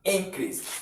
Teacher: as you are looking at it to be a noun, you stress the first syllable, which is in. Then the second syllable, you don't stress it.